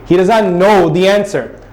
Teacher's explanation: If I'm telling someone, I would say, he does not know the answer. I'm adding a rising tone.